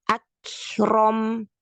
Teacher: Nah, di sini kafnya ada dua ya. Kalau huruf kaf itu cara kita melafazkannya, kita syiddahkan dulu baru kita hamaskan.